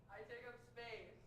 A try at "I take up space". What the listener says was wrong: Oh, more vowel. Space. I want you to look at the top of that TV and send the sound to there.